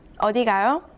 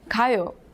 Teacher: The next two syllables are from last lesson, and they mean I'm going, 가요. But if you add a question mark and read the last syllable with a rising tone, the whole sentence means where are you going?